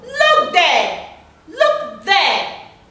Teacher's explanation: The two syllables are stressed.